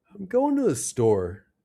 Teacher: Let's start with falling intonation. This is when our pitch goes down at the end. We use falling intonation for statements, commands, and for questions with words like who, what, when, where, why, and how.